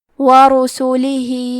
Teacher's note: یہاں حکم ہے مد صلہ کبرا، تو ہم اپنی آواز 2 سے 4 مد کے برابر لمبی کریں گے · را پہ اور سین پہ پیش ہے، تو ہم یہ دونوں پیش کو ظاہر کریں گے اور حرف را کو موٹی آواز میں پڑھیں گے. ہا کے نیچے کھڑی زیر ہے اور ہا پہ مد کا علامہ ہے.